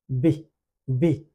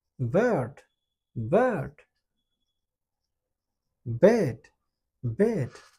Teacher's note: এই বাতাসের একটা বিস্ফোরণ ঘটবে, এবং এটা ভোকাল কর্ড থেকে সৃষ্টি হবে, কারণ এটাকে বলে ভয়েস সাউন্ড।